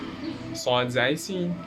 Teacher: tip of the tongue with the palate of the lower teeth, we have صاد زي سين, and there is a whistle sound with these letters